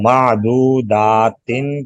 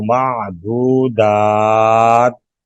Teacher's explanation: लंबी ता को वक़फ़ में साकिन करते हैं